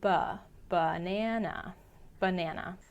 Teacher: the stressed syllable na gets pronounced with a true short a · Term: schah